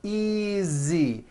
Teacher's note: the S is like a voiced Z